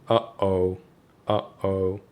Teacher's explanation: your vocal cords have to close suddenly and then open again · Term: glottal stop